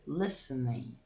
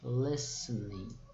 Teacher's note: Lembrando que aqui a gente não pronuncia o T nesse verbo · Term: silent letter